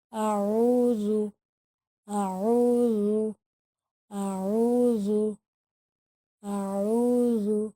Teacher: عین کو ہمیں حلق سے ادا کرنا ہوگا اور ذال کو نرمی سے پڑھنا ہوگا۔